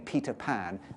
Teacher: Peter Pan with two aspirated Peas at the beginning of Peter in the beginning of pan and we've got them to hold up a piece of paper